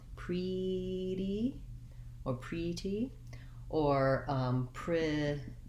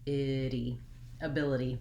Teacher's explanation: That's because you have to go from the lax I into the tense E, but the E is unstressed, and so it's short and light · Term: ity ending